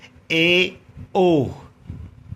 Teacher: संवर्त से थोड़ा अधिक मुख खुलेगा अर्ध संवर्त में। ए, ओ, इनमें थोड़ा अधिक मुख खुलता है।